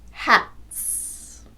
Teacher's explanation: T is a voiceless consonant, t. So the S is pronounced s